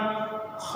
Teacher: खा भी हलक से ही निकलेगा लेकिन खरखराहट के साथ निकलेगा